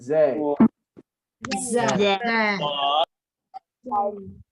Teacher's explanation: all of these sounds are produced with the tip of the tongue